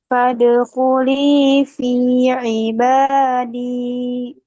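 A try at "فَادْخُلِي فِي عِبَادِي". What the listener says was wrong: Nah, dalnya terlalu naik, Bu. Coba turunkan sedikit. Ibadi, bukan ibadi.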